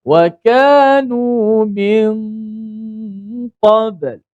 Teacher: Tinggal nun hanya tinggal pada gunnah saja. Suara sengau, suara gunnah saja yang berlaku di hidung. Maka nun tu disembunyikan di sisi huruf qaf. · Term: ikhfa hakiki